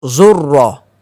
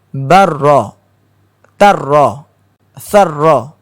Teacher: ra ini berada pada hujung lidah, tepi lidah, bertemu dengan gusi gigi atas itu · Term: huruf ra